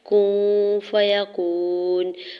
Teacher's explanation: کون فیکون، کاف کی پیش کو نون ساکن کے ساتھ ملاتے ہوئے نون ساکن کے بعد فا حرف اخفا میں سے ہے تو یہاں نون ساکن پہ اخفا کریں گے، ٹھیک ہے، آواز کو ناک میں چھپاتے ہوئے پڑھیں گے